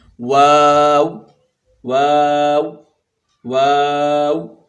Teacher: جیسے وہ انگلش کا ورڈ ہے WOW، واو کہتے ہیں لوگ، تو اسی طرح اس کو بھی واو، اس میں وا کی آواز کو کھینچنا ہے اور آخر میں ہونٹ پھر واپس گول کر دینے ہیں، جس سے او کی آواز بنے گی